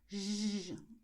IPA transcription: ʒ